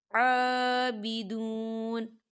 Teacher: صبغۃ ونحن، صبغۃ ونحن لہ عابدون، عابدون، یہاں کھڑی حرکات ہے تو دو حرکت کی برابر کھینچیں گے